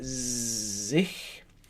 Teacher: it's got a voiced z at the beginning, like a bumblebee, sich. And at the end, it has a which basically, physiologically, you have quite a high tongue, and you just kind of breathe through the small gap between your tongue and your soft palate.